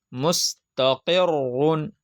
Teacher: دو پیش تنوین ہے، تو اس لیے را پر پڑھی جا رہی ہے. را کے اوپر پیش ہو یا دو پیش ہو تو را پور ہوگی